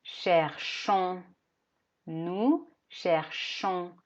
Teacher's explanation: no pronunciamos ons sino que pronunciamos solo una o nasal m m y nos aseguramos de dejar la boca abierta para